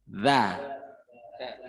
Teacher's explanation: Ujung lidah ketemu dengan 2 gigi seri bagian atas. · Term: huruf the